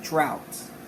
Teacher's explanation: the ah sound can also come before W to make a diphthong as in the word droughts now when you open your mouth